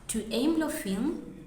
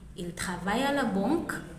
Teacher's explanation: you make a statement, then you raise your tone at the end to indicate that it's a question you're asking. · And you can clearly see that these are statements, but because there's a raised tone at the end, they transform into questions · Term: Intonation